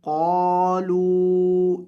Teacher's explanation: قاف کو موٹا کریں گے اور لمبا کریں گے ، اور لام کو بھی لمبا کریں گے، قَالُوا إِنَّا مَعَكُمْ